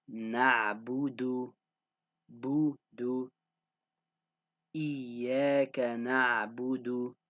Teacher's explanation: the ba and the dal, you circle your lips for both of them because they both have dhammas on them.